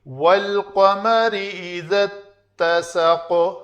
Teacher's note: پھر قاف کے اوپر قلقلہ کیا، زبر تھی ہم نے ساکن کیا